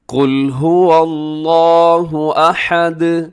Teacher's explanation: قل میں قاف موٹا رکھیے گا